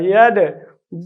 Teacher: ید دغه قلقله چې حرکت ته مشابه ده دا باید نه زور ته مشابه نه زیر ته او نه پیښ ته